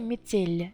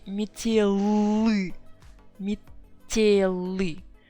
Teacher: soft sign makes L sound softer. If I put I instead of soft sign, it would be метелы, метелы.